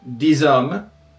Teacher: /diz/ when there's a vowel afterwards